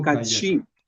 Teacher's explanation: El acento cae en la última.